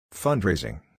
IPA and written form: ˈfʌndreɪzɪŋ (fundrasing)